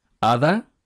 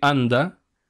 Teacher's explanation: la D de hada y la D de anda no es la misma porque en hada la boca estaba abierta pronunciando una vocal y luego pronunciando otra vez la vocal, mientras que en anda la N obliga a la boca a cerrarse y luego con la D se pronuncia de manera distinta, incluso si se intenta hacer la misma articulación.